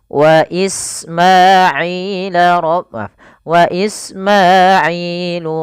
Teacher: sin itu punya sifat hamas, yaitu mengalirnya nafas. Ya, alirkan is.